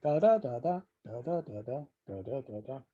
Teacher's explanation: So each of them has 2 peaks in it. It has one very high first peak and then one much lower second peak.